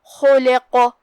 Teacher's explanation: جو کہ ہم قاف پہ رکیں گے تو اس پہ ہوا جزم، تو ہم قاف کو ہلاتے ہوئے یہ کلمہ کو پڑھیں گے کیونکہ یہاں حکم ہے قلقلہ